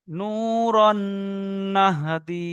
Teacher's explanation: এখানে তানবিনের পরে নুন এসেছে, তাই তানবিনকে নুনের সঙ্গে মিলিয়ে একালিপ পরিমাণ গুণনা করে করতে হবে।